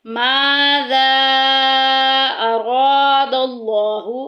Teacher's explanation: माज़ा अरादल्लाहु, अरा में देखें अलिफ पीछे ज़बर आ गई, अलिफ मद्दा का कायदा, और लफ्ज़ अल्लाह के लाम के पीछे ज़बर आ गई, लफ्ज़ अल्लाह का लाम मोटा पढ़ा जाएगा, पुर पढ़ा जाएगा